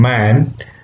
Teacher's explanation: When you say m as in man, we get both lips involved in it. Okay, so therefore they are called bilabial sounds.